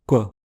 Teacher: un que labialisé, ça consiste à prononcer en même temps un que et un ou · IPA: kʷ